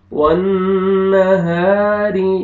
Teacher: واللیل اذا یغشا، والنہار اذا تجلی، والنہار، نون مشدد ہے غنہ کریں گے، ہا الف مدہ، الف سے پہلے زبر، ہا کو آپ نے کھینچنا ہے، را کو نیچے زیر ہے، را کو باریک کریں گے